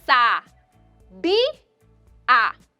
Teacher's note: Qual é a sílaba mais forte aí? É o bi. Fica na penúltima sílaba.